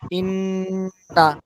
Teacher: নুনে মিমে তার সাথে হলো ওয়াজিব গুন্না, এটা গুন্না বেশি হবে।